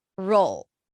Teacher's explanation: and then it's an R sound aw and an L roll it's a dark L but it feels like there it's almost like you're adding an o sound R roll roll R roll roll the secret here is to